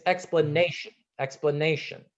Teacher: the stress on this word is on the third syllable